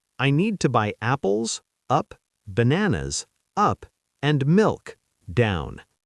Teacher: When you list 3 or more things, your voice goes up, up, and then down on the last one. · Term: the list melody